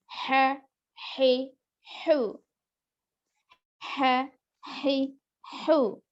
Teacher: اس وجہ سے دیکھیے عین زبر حلق کا درمیانی حصہ ہے، پھر یہ ہا بھی حلق کا درمیانی حصہ